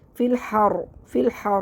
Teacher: وقفی صورت میں را کو موٹا پڑھیں گے کیونکہ را ساکن سے پہلے زبر ہے